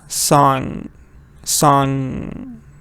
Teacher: But they're a little different because this says a little sound at the end. Yeah, it has a little ing sound like we have. It comes out of your nose.